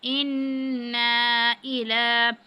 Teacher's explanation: لام پر کھڑی زبر ہے، اس کو بھی تھوڑا سا کھینچا ہے.